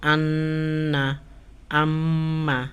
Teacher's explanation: নাকের বাঁশি হইতে গুন্না উচ্চারিত হয়